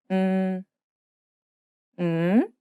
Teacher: This means that you must pronounce and hold the sound longer than the previous M sound so that it becomes its own syllable. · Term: syllabic